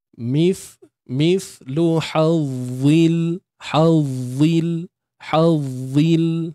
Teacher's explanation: Huruf dha ni kan keluar sikit kan. Hujung lidah kita. Dalam masa yang sama. Tebalkan dia.